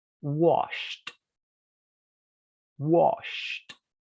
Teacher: Cuando el último sonido de la palabra es sh, por ejemplo, wash, la ed va a sonar t.